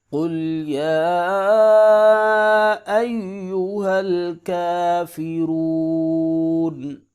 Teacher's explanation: یا کے اوپر کھڑی زبر بھی ہے، مد بھی ہے، لہٰذا 3 سے 4 الف کے برابر اس کو لمبا کریں گے